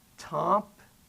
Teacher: I'm just saying it with a nasal vowel, but it's still the same word.